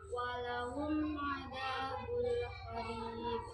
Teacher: Kalau yang kedua kan ada qalqalah wusta, ciri-cirinya gimana sih? Huruf qalqalahnya di akhir kalimat diwakafkan tanpa tasdid.